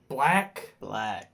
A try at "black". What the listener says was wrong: Says it with like a hard A.